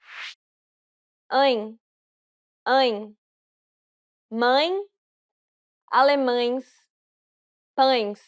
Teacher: this is similar to the Y-I-N in the word flying. Since it's a nasalized diphthong, you need to pronounce it through the nose. And the E is closed.